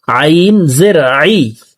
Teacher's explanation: আইন হরফকে হলকের মধ্যখান থেকে উচ্চারণ করব কারণ আইনের মখরাজ হলকের মধ্যখান থেকে হবে।